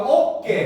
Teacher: 어와 에 사이에 된 소리가 나는 거